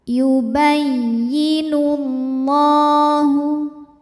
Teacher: [Musik] lam jalalah dibunyikan secara tafkhim sebab huruf sebelumnya berharakat damah maka cara bacanya adalah ditebalkan bunyinya l pangkal lidah dinaikkan